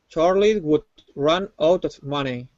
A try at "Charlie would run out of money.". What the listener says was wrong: Okay, give me a good R in Charlie instead of Charlie. Charlie.